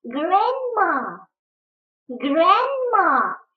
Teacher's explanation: я подчеркнула буковку «ди», потому что она в этом слове не произносится, не читается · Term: правило красивого чтения